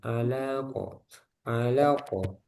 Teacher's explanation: jadi alaqo lamnya jangan sampai kepanjangan alaqo alaqo langsung ke qaf